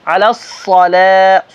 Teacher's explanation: صاد موٹا بول کے آگے لام پتلا